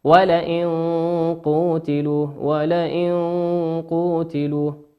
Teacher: النون في كلمة ولئن نون ساكنة أتى بعدها حرف القاف، والقاف من حروف الإخفاء.